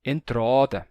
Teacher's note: ele alongou o A de entrada e saiu assim, entrada.